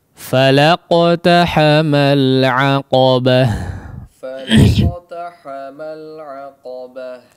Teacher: maka ta marbutah ketika kondisinya diwaqafkan ya, menjadi huruf terakhir pada kondisi waqaf, maka dia berubah menjadi ha ya